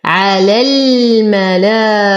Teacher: انتقل من فتحة اللام إلى إسكان اللام القمرية في كلمة الملائكة، حرف المد يسقط بسبب التقاء الساكنين